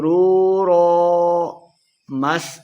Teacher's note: مس سین پہ سیٹی کا آواز آئے گی